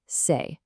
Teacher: As you speak it, there's a distinct physical movement, a glide, in your mouth from the first vowel sound right over to the second. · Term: diphthong